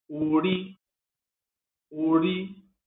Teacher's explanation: com tom baixo e alto, para identificar manteiga de carité, banha de ori.